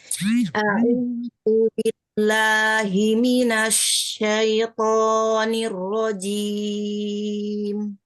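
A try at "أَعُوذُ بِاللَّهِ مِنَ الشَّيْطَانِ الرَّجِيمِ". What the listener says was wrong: Ya, sedikit lagi ya, tipiskan huruf lamnya, nggak lo, la.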